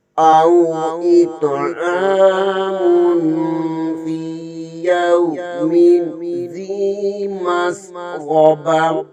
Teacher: غین کو بھی پر پڑھیں گے اور تا کے نیچے دو زیر ہے یہاں پر وقف کی صورت میں تا کو ختم کر کے ہا پڑھیں گے